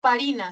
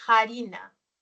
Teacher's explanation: biodental se aspiró ya no se decía más farina sino harina se aspiró o sea se pronunció la Ja